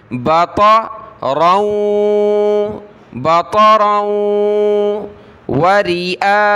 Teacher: دیارہم بطرا، طا اور را کو موٹا کریں، را کو واو کے ساتھ ملائیں گے، ناک میں آواز پیدا کریں گے